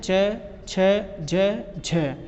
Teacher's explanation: क्या होता है? कि वे व्यंजन जिनके उच्चारण का समय अपेक्षाकृत अधिक होता है और उच्चारण के बाद वाला भाग संघर्षी हो जाता है, स्पर्श संघर्षी व्यंजन कहलाते हैं।